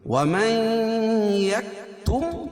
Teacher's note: نون ساکن کے بعد ادغام مع الغنہ کے 4 حرفوں میں سے یا ہے، تو یہاں غنہ کر کے پڑھیں گے. وَمَن يَكْتُمْ ہا الف مدہ، فَإِنَّهُ نون مشدد ہے، غنہ ہوگا.